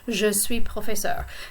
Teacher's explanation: the S is silent because professeur begins with a consonant and not a vowel